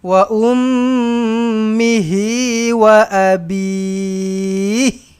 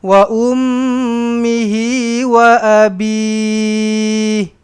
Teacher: Kena bunyikan jugalah ha tu, kena jelaslah dengar.